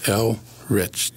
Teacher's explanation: I have one of those names that, for whatever reason, people don't pronounce right, even though it's so phonetic that it's kind of hard to miss. Elrich, two syllables. You know, nice natural break between the L and the R.